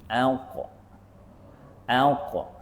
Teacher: Qaf kita hanya naikkan pangkal lidah. Kekalkan tengah lidah di bawah. menyebabkan dia ada ruang antara tengah dengan langit-langit atas.